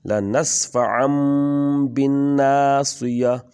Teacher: آگے تنوین کے بعد یعنی دو زبروں کے بعد با آ گیا ہے تو اس کو ہم میم میں بدل دیں گے